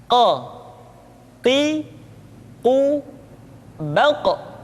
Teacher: Huruf qof diucapkan dengan cara menyentuhkan pangkal lidah kita dengan langit-langit bagian belakang. Qo qi, quucapkan dengan suara yang tebal dan dalam posisi sukun. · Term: huruf qaf